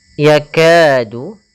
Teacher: ada hukum tajid berupa ad thai'i pada huruf Kaf yaitu adanya fathah bertemu dengan alif kita panjangkan untuk huruf kafnya sepanjang dua harakat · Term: Mad Thobi'i